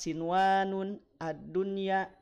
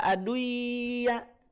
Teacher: Nun sukunnya tetap dibaca jelas. Ya, nun sukun tetap dibaca jelas, tidak dibaca idgham. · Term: izhar mutlak